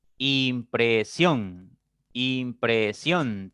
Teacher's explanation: la mayor fuerza de voz la mayor intensidad cae en la en la última sílaba ción por lo tanto esa es la que tiene la mayor fuerza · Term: sílaba tónica